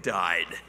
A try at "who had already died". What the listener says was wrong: It's still not there. The volume meter isn't still there.